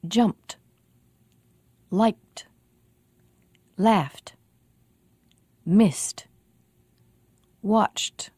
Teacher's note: If a word ends with p or k or f or th, the voiceless sounds except for the t sound, the ed ending will also be voiceless. It will sound like t.